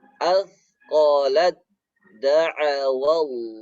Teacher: Taknya ini sudah tidak berbunyi lagi, ya.